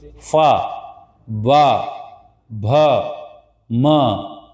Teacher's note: अगला है बच्चों हमारा ओष्ठ ध्वनि मतलब जो सिर्फ ओठों की मदद से निकले उसे हम कहते हैं ओष्ठ ध्वनि।